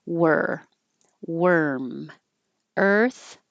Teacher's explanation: you have to round your lips for the W but you don't keep them rounded